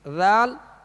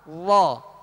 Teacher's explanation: ذال کو باریک پڑھیں گے اور وا کو پر یعنی موٹا پڑھیں گے